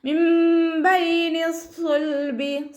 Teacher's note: മിൻ ബൈനി സ്സുൽബി, സ്വാദ് ഇസ്തിഅലാൻ്റെ ലെറ്ററാണ്, തഫ്ഹീം ചെയ്തിട്ട് ഉച്ചരിക്കുക. ഇത്ബാഖിൻ്റെ അക്ഷരം കൂടി ആയതുകൊണ്ട് നാവിൻ്റെ ബാക്ക് നല്ലോണം മുകളിലേക്ക് ഉയർത്തി കൊടുക്കണം